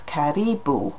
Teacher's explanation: So in Swahili it's karibu, the stress is on the second syllable there